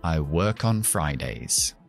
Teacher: ¿Te has dado cuenta cómo conecto work, la K, con on? Arranco la palabra on con la K.